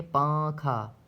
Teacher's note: نون کی آواز کو ناک میں چھپا کر پڑھنا چاہیے، نوک زبان تالو سے ہٹا کر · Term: اخفا